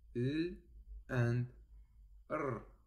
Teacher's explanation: a partial obstruction when the tip of the tongue is in contact with the alveolar ridge, like in l and r. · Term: Liquids